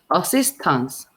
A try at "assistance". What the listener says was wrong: it's not so much taunts as tans assistance like tin think of it as almost said tin tin